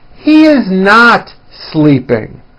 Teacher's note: notice how my voice comes down at the end of a sentence that is not a question